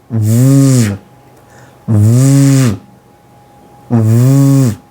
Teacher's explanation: The lower lip and the upper teeth will be conjuncted together.